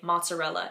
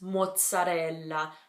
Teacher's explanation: It's mozzarella. So the little pause before the Z's, and the L just needs to be held for a bit longer